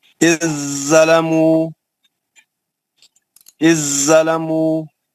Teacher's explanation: حرف زال ساکن کا حرف زوئی میں ادغام متجانسین ہو گیا